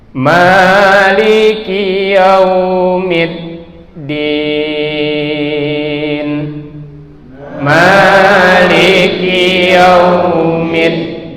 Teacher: Nah, midnya ini baru ditekan karena dalnya memiliki sifat syiddah. Syiddah itu adanya penekanan suara yang sangat kuat.